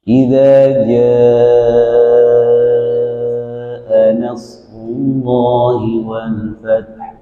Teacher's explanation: Inilah yang dimaksud dengan mad wajib muttasil. Mad wajib muttasil harus dibaca 6 harokat. Jadi jangan 2 harokat tapi dipanjangkan jadi 6 harokat.